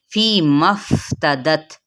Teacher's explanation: मीम की ज़बर अब हम फा के साथ मिलाएंगे, मद नहीं करेंगे